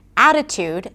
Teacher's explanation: In the word 'Attitude' the primary stress is on A.